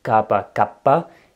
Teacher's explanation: il y a des mots qui se différencient par la gémination, le redoublement de consonnes